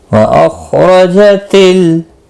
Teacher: ख़ा मुस्तालिया है, पुर पढ़ा जाएगा।